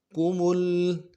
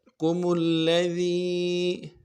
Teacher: میم کو آگے لام کے ساتھ ملانا ہے، تشدید ہے